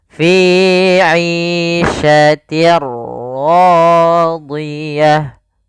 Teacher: Apa yang dimasukkan adalah suara tanwin. Awalnya fi 'ishatin, ketemu ra, maka langsung masuk di ra-nya, bunyinya langsung ke huruf ra. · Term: idgham bila gunnah